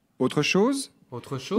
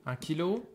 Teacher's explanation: he indicates that this is a question by letting his voice go up in tone at the end